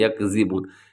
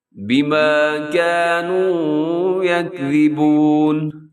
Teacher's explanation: یہاں زا نہیں بلکہ ذا لکھا ہوا ہے جس کو نرم پڑھتے ہیں، جس میں سیٹی نہیں ہوتی